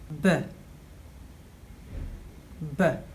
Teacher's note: This is a Lenis Bi-labial plosive sound